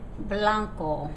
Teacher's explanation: in Spanish it's a bit softer the lips almost meet